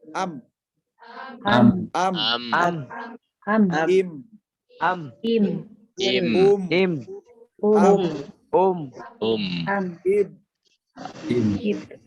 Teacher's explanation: Mim harus disertai dengan gunnah yang keluar dari al-khayshum.